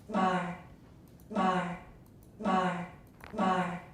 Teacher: listen for the breathiness or the murmur in the vowel so you can see the two dots are under the vowel